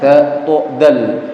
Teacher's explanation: Itu tempat keluarnya sama, yaitu punggung ujung lidah ditemukan dengan pangkal gigi seri bagian atas